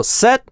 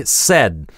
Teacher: в первом супер краткий гласный, который обрывается гортанной смычкой, а во втором гласный тянется чуть дольше и вибрация голосовых связок успевает еще погудеть на начальной фазе "d".